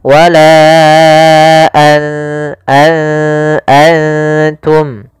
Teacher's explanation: Maka apabila ada nun sukun atau dia huruf yang tanwin, an, in, un, karena tanwin dan nun sukun itu sama bunyinya, kedua-duanya adalah bunyi n, maka ketika bertemu ta, nunnya disamarkan ke huruf ta, an langsung kepada makhraj daripada makhraj huruf ta. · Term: ikhfa